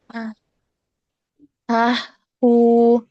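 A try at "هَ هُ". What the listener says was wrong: Kalau anti terputus. Ha, hu berasa nggak anti diputus, Mbak? Tapi Ana yakin anti nggak apa napasnya tuh nggak pendek. Coba diusahakin ya, diusahain. Tapi ini agak temponya nggak agak cepet nggak apa-apa. Misalnya anti maksudnya nggak terlalu panjang napasnya.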